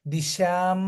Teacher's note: దిశ ఎందుకంటే తాళవ్య శకారం అని పలుకుతాం